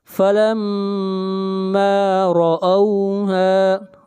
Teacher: را کو موٹا پڑھیں گے، را کے اوپر زبر ہے۔ ہا کو بھی کھینچ کر پڑھیں گے، ایک الف کے برابر۔